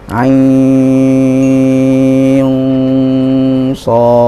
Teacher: Nun sukun ketemu shad, hukum bacanya adalah ikhfa, maka kita juga baca dengan cara mendengungkan ain shad. Nah, dibaca dengung, tetapi catatannya adalah dengungnya ini setelah 6 harokat di ain. Kalau sudah 6 harokat baru kita masuk ke dengung ain shad.